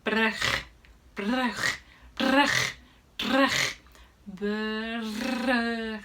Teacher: A good word to practice both of these is the Dutch word brug, which means bridge. So the R is the tongue flutter and the G is the throat flutter.